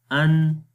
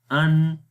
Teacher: हमज़ा नून ज़बर अन। तो जब हम अन पढ़ेंगे तो नून के ऊपर सांस रुक गया, अन। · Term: सिफ्त जहर